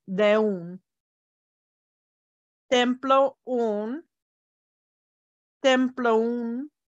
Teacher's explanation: The O's kind of combine and the words almost run together. · the vowels at the end and the beginning of a word kind of make the words go together